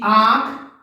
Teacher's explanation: उच्चारण के समय वायु नाक और मुख दोनों से बाहर निकलती है। ऐसी ध्वनियों को अनुनासिक ध्वनियां कहते हैं।